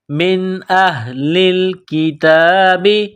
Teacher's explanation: نون ساکن پر غنہ نہیں کریں گے، آواز ناک میں نہیں چھپائیں گے۔ تو یہاں نون ساکن کے بعد حمزہ ہے، حروف حلقی ہے تو نون ساکن پر غنہ نہیں کریں گے۔ · یہ چشمے والی گول ہا ہے، صرف منہ سے ہوا نکالنے کی طرح اس کو پڑھیں گے